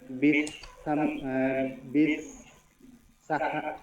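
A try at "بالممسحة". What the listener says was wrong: বিল মাসাহাতি, ওরে মিম আছে এখানে, বিল মাসাহাতি।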